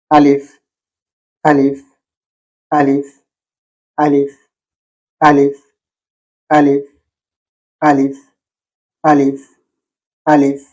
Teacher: মাখরাজ গলার নিচের দিক থেকে আওয়াজ আসে